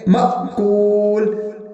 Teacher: معقول نہیں پڑھیں گے بلکہ تھوڑا سا جھٹکا لگائیں گے